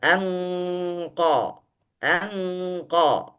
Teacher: ketika kita bacakan, masuk dari hidung, khaysyumnya, maka mulut sudah berbentuk tebal. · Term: ikhfa